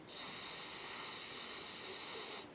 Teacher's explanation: Now produce a long S sound and you will notice no vibration. S. Vowels are voiced, while the S sound is voiceless.